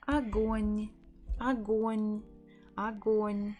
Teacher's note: The first letter, the first O, is not stressed, so we will pronounce it as a, g, o, н. Огонь, огонь, огонь.